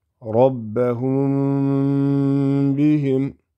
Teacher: This is going to be idhar mim sakin, so it has to be clear.